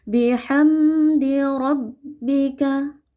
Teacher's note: Mim sukun berjumpa dengan dal, hukumnya izhar halqi, mimnya dibaca jelas tanpa berdengung. Bihamdi rabbika, ra-nya dibaca tebal karena fathah.